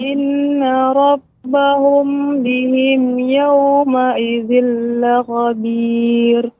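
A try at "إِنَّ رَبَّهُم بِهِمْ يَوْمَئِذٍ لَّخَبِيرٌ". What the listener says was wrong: Bagus Ibu ya, koreksiannya ya, yaitu rabbahum ini juga tadi kurang lama sedikit, diberi tempo. Rabbahum bihim, ya, tidak terlalu cepat. Rabbahum bihim, maka tidak ada jedanya, tidak ada tempo.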